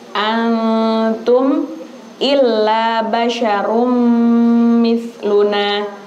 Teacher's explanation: di situ ma antum itu ikhfa dengung. Jangan cepat-cepat.